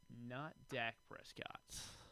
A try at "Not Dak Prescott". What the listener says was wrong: Yeah, you emphasized the wrong syllable.